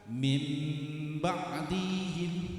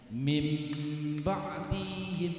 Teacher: Artinya adalah suara nun mati dan tanwin ditukar dengan suara mim mati. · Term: iklab